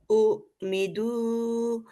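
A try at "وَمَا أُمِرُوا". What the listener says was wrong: ওয়ামা উমিরু, এটা দা কেন হবে?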